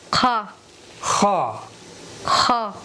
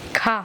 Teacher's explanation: اس کی آواز ہے خا آخر حلق سے